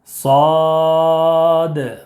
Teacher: صاد میں مد لازم حرفی مخفف ہوگا، 3 الف یا 5 الف کے برابر کھینچ کر پڑھیں گے۔